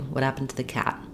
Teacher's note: So the vowel U of to becomes reduced to a schwa, and I'm either going to make this a D, what happened to the, or the way I wrote it here, I'll use an unreleased T, what happened to the, and use an aspirated T in my word too.